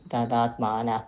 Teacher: The visarga has ih sound only, but na has that a sound, so that visarga ih will become ha.